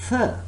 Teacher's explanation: touching the tip of your tongue with the inside of your front two teeth, but you are not producing vibration, or you do not feel any vibration when you produce the sound th.